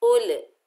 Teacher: उल आपने नहीं करना क्योंकि कलकला पैदा हो जाएगा